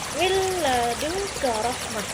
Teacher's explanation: Maka huruf nun matinya atau nun sukunnya masuk ke dalam lamnya. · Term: idgham bila gunnah